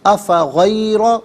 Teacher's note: افغیرہ میں را پر زبر ہے، را کو پر کر کے پڑھیں گے